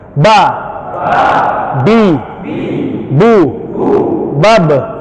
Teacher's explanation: ba itu keluar dari bibir atas dan bibir bawah yang bertemu, bersentuhan, nempel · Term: dua bibir